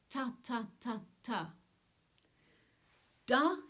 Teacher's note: i don't use quite the tip of my tongue but a little further back and it connects a little further back and higher in my mouth to the ridge of gum behind the teeth · Ta is the most far forward, and when I say it, I can feel the join between the top of my front teeth and the gum just above it with the tip of my tongue.